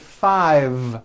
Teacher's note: yes I said five with a voiced V